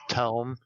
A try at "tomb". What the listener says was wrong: No, it's it's tomb. It's pronounced tomb. Tome has an e at the end.